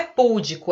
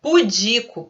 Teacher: Não é púdico, é pudico, paroxítona.